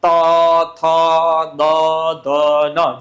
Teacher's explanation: દાંતે અડશે બોલો તો ત થ દ ધન જીભ ક્યાં આડી દાતે તો એને દંત્ય કહેવાય